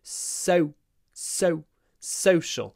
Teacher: there's also a W sound. Social, but it's clipped before the sh, the unvoiced sh.